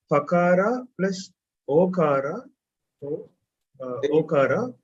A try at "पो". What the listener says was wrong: Pa nasti. Pakara nasti. There is a line here. Shakara There is a difference.